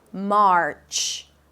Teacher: you wrap it up with a 'ch' sound - a T and a SH